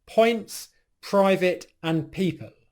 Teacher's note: when you pronounce the P, it's completely silent. There's no voicing in your throat. And the only noise that happens as you release the P sound is just simply silent air exploding out. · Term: aspirated plosive sound